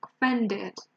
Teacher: here are many people saying that we stress the first syllable it's actually the second one